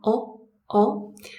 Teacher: In summary, it's this very round sound with a very back, low tongue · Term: British short O sound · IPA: /ɒ/